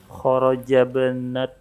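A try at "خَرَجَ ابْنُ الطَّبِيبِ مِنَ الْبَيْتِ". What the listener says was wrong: Nah, itu dhammah, nu-nya dhammah. Nah, kharaja benu, bukan kharaja ibnu, tapi kharaja benut tabibi.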